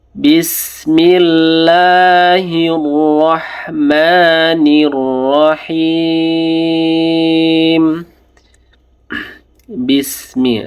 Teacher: Nah, sinnya tipis saja, jadi jangan tebal-tebal.